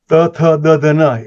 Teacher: એ દાંતને અડીને થાય છે